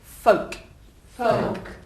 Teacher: There's no L. Imagine the L is not there. It's got an E on the end, if you like.